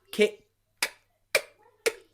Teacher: The final sound is k, k, is a voiceless sound. There's no sound from our vocal cords.